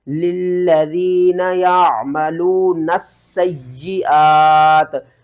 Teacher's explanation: 2 مرتبہ یا کو پڑھنا ہے، 2 مرتبہ سین کو پڑھنا ہے، سین کے اوپر بھی سختی کرنی ہے اور یا کے اوپر بھی سختی کرنی ہے